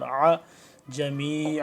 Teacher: عین گلے سے حلق سے نکالنا ہے نیچے سے